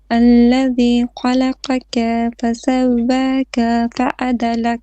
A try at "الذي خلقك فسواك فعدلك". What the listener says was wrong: You're stretching your ka all the time. You're saying خلقك فسواك. No. It's a short vowel. And خلقك. So there is heavy, light, heavy, light.